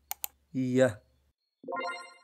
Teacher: هو التقاء الجزء الأمامي من اللسان مع الحنك الصلب لينتج الصوت ي. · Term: Palatal